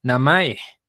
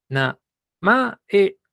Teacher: Baja, alta, alta. Es decir, el tono alto se mantiene.